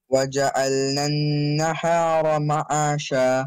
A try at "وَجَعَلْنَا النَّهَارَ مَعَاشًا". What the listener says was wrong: Make the ha softer. You're making it sharp. Read it from the chest. نَهَارَ Let it loose. معاشا Do you say hi hi? Do you say hi hi? يا پھر hi hi? You say hi hi. You say he goes to school.